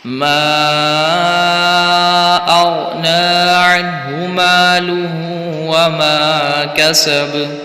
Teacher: मा अग़ना गैन को पुर पढ़ते हुए पढ़ना और हिलाना नहीं है यहाँ पर